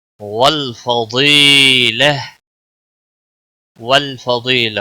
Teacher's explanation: واد حروف مستعلیہ میں سے ہے، پور پڑھا جائے گا